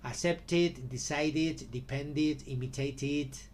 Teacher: cuando Ah acaba la palabra el verbo acaba en t o en D pronunciamos E